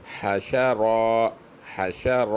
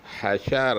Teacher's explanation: ہا بھی پتلی ہے، شین بھی پتلا ہے، اور را موٹی ہے